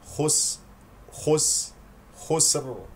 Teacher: سين ساكنه فيها صفه الهمس والصفير · لفي، اكسر الفاء جيدا، خو مفخمة من المرتبة الثالثة، سين ساكنة فيها صفة الهمس والصفير، خس خس خسر، وهنالك من يقول خسر، لفي خسر، وهذا خطأ لأنه حرك السين والسين ساكنة.